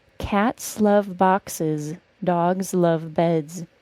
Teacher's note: The word cats is the only word with an S sound in that sentence. The rest are all pronounced as a Z sound.